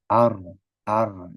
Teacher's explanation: Ro itu makhrajnya ujung lidah, kemudian juga melenceng ke punggung lidah.